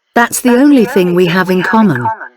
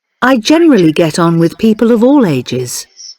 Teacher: we often link these words we say them without any pause between the words